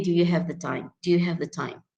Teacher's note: the stress is, if you notice, is on the word have and time